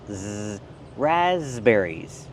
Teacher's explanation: The s makes a z sound like in zebra with a voice